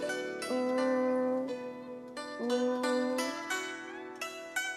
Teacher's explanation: the first tone, which is high-pitched and level, is changed from 5 to 5